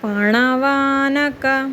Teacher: అణ వచ్చినప్పుడు మన నాలిక పైన ఉన్న అంగిడికి తగలాలండి